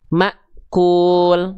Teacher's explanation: Hamzah sukun yang punya sifat syiddah. Ada ngeremnya dia.